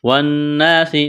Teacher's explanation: نون مشدد پر غنہ کرنا ہے، آواز ناک میں چھپائیں گے